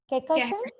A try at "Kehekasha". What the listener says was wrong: Kehekasha. Yes, there's an emphasis on the H and the N is silent.